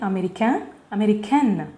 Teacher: In female form, N should be pronounced with much stress.